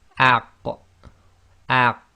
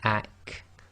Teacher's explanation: The qaf is slightly behind the kaf.